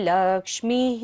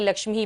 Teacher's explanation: विसर्ग है, सारी सांस का विसर्जन करेंगे लक्ष्मी ही पर बोलते हुए